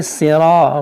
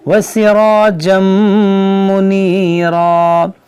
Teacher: را کو پر پڑھیں اور الف مدہ ہے کھینچیں ایک الف کے برابر